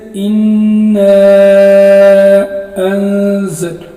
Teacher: اور اگر حمزہ دوسرے کلمے میں ہو تو اس کو مد منفصل کہتے ہیں، جیسے اِنَّا أَنزَلْنَاهُ، یہاں پر اِنَّا میں الف مدہ ہے، اس کے بعد حمزہ ہے۔ اِنَّا میں جو الف ہے اس کو ہم 4 الف کی مقدار لمبا کر کے پڑھیں گے